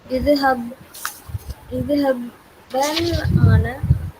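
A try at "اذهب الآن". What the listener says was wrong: idhab alana becomes idhabil ana. இங்க பாருங்க, இலா பில் ஆன. எழுத்திகா சாக்கின் வந்தா இலா பில் ஆன, அப்போ இஸ்ஹபில் ஆன கஸ்ரா போடணும். சுக்குன் of course correct, but when you read it together இஸ்ஹபில் ஆன.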